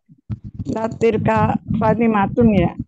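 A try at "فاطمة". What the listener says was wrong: Iya, Fatimatu nggak pakai un.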